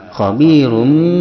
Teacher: Wattaqullaha innallaha khabirum bima. Khabirum, tanwin doma bertemu dengan ba, hukumnya adalah iklab, yaitu menggantikan n kepada m disertai dengan gunnah